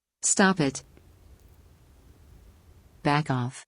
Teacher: the puff of the consonant sound Blends into the vowel sound that begins the second word